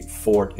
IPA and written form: fɔrt (forte)